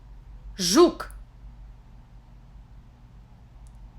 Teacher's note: Ж represents the consonant Ž, somewhat similar to Ž in English measure or pleasure, but hard